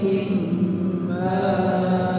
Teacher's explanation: Ini agak sedikit ditekan ketika jumpa hamzah ketika waqaf. Jadi ma ditekan sedikit ya.